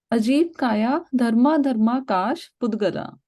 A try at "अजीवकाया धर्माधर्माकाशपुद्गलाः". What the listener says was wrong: पुद्गलाहा, ये जो विसर्ग है ना पीछे, पुद्गलाहा, वो विसर्ग पढ़ना होता है।